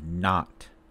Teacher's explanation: So, ah is low central lax, but o is mid-back tense vowel. So, when we pronounce ah, lips should not be rounded. See, not.